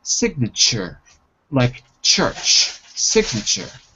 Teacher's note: the tu in sure it's pronounced like a ch so t u equals ch